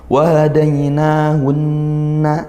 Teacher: maka nun bertasydid dibaca gunnah, didengungkan juga